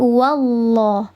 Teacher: Bukan wawuloh, tapi wallah. Wallah, diangkat pangkal lidah atau lidah bagian belakang itu diangkat, dikeraskan sehingga menghasilkan bunyi yang tafkhim atau bunyi yang tebal.